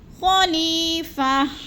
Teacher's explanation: خلیفہ، خلی میں یا مدہ ہے، یا ساکن سے پہلے لام کے نیچے زیر ہے تو یا مدہ، یا مدہ کو ایک الف دو حرکات کے برابر ہم نے لمبا کر کے پڑھنا ہے، جیسے خلیفہ۔